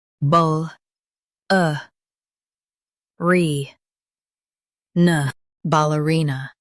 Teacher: Emphasize ree and keep ball soft. The nuh is light and quick.